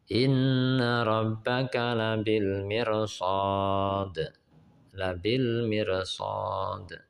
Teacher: Ra sukun bila menghadapi huruf istila dibaca tebal walau didahului oleh kasroh. Cara membaca atau pengucapan ra sukun diikuti bibir agak maju.